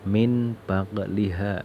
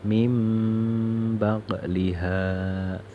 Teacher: Ini kalau lihat tulisannya itu adalah min bagliha, tapi tidak boleh dibaca min bagliha. Nun sukun ini harus diganti dengan mim, yaitu cara membacanya mim bagliha. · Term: iqlab